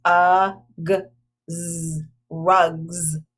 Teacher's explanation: the S on the end sounds like a z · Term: suffix s